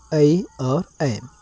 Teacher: मतलब कंठ और तालु दोनों के सहयोग से जिस वर्ण का उच्चारण स्थान होगा, क्या कहलाएगा? कंठ तालव्य वर्ण कहलाएगा।